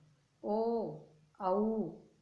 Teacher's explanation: कंठ और ओष्ठ दोनों काम कर रहे हैं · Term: कंठोष्ठम